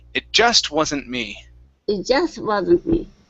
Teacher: So we want to come down on me instead of saying it just wasn't me and coming up. Okay, that would be like asking a question.